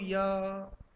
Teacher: या हल्का सा तालु से जाकर टच कर लेता है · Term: अर्धस्वर